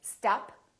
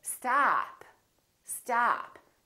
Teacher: this vowel is usually longer than most people who are non-native speakers tend to make it.